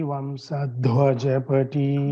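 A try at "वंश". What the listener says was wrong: Vamsha. It should not be heard as Vamsa. Vamsha. Mahodaya, one thing, like I said, the sa-sha differentiation should be clear. Vamsha and shishira. It should not be heard as si, shi, sha, shishira kara.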